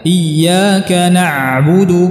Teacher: pengucapan yang benar untuk huruf ain adalah kita tidak menahannya, tidak mensyiddahkannya seperti huruf hamzah